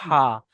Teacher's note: আইন হা একসাথে উচ্চারণ হয় গোলার মাঝখান থেকে, কণ্ঠনালীর মাঝখান থেকে উচ্চারণ হয় আইন হা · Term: বড় হা